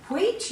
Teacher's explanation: the chut sound in wheat you've got the h after it if you say wheat you can feel air after the w